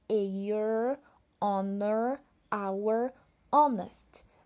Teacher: São 4 palavrinhas no inglês em que o H não é audível